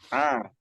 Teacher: kalau ain jahar jelas nggak ada hembusan nafas. Oke, nggak ada hembusan nafas A, ketika mengucapkan.